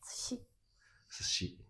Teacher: this u is unpronounced. However, you have to keep one moa. It has two moras, two beats.